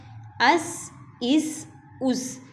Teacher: یہ جو ہے یہ سیٹی والے ہوں گے، سین جو ہے اس کو باریک اور سیٹی والا پڑھا جائے گا · حمزہ زبر صاد اس، حمزہ زیر صاد اس، حمزہ پیش صاد اس، اس اس اس۔ اب صاد موٹا بھی اور سٹی والا بھی، سٹی بھی اس میں پائی جائے گی تھوڑی سی، اور صاد کو موٹا بھی کیا جائے گا